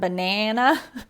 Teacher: American English, we have this kind of nasally sound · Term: short A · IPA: /æ/